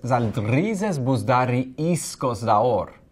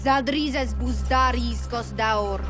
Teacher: So she switches the S and the K.